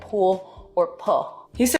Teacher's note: Vocalization, so that's an L turning into a vowel in a word like pool or pull.